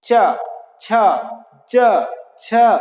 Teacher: चा वर्ग का जो उच्चारण स्थल है वो है तालु। तालु का मतलब होता है जो हमारी गले के आगे का जो भाग है ऊपर वाला, उसको हम तालु कहते हैं। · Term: तालव्य